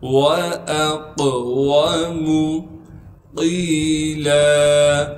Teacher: قاف کو موٹا کر کے پڑھیں گے اور قاف کو آگے یا مدہ سے ملا دیں گے۔ قاف یا زیر قی، مدہ ہونے کی وجہ سے قاف کو ایک الف کے مقدار کھینچیں گے۔ · اس حمزہ کو بغیر کھینچے بغیر جھٹکے کے پڑھیں گے۔ حمزہ کو آگے قاف سے ملائیں گے کیونکہ قاف ساکن ہے اور قاف میں قلقلہ کیا جائے گا